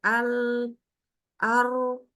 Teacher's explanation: Al walaupun nanti buntut-buntutnya huruf lam ini akanentuh tepat ke e lidahnya langsung menyentuh dengan ujung langit tapi enggak tidak putus suaranya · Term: tawasud